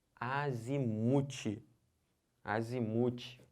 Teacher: É o mu que é a sílaba tônica.